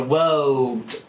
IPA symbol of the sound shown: ɫ